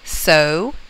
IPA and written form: soʊ (sew)